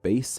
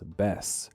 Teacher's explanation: Certain vowels are shortened in words, with a word like bass being pronounced as bess.